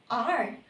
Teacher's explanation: Ang paraan ng artikulasyong pakatat. Ang hangin ay ilang ulit na hinaharang at pinababaya ang lumalabas sa pamamagitan ng ilang beses na paglapag ng dulo ng nakaarkong dila. Ang halimbawa naman ng paraan ng artikulasyong pakatal ay ang letrang R.